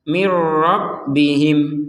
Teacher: Nun sukunnya sudah dimasukkan kepada huruf ro sehingga nun sukunnya tidak terbaca dengan jelas lagi.